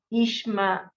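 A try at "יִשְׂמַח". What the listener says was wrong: Not ish. No, it's not a shin. It's a sin. That's on the left.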